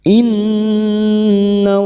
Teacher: Nun yang bertasdid gunnah musyaddadah kita dengungkan selama 3 harakat.